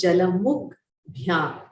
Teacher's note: before Bha, because it is a soft consonant, the Kakara becomes a soft consonant itself. It becomes Jalamukh Bhyam. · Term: Mridu Vyanjana